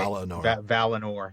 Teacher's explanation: That second syllable with that I should be an e sound rather than an I sound.